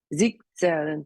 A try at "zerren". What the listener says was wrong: sich zerren. Remember the T sound.